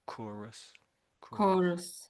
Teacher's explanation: So I'm saying core. So, so the H you might say is silent. You could say core and then Russ or us. Chorus.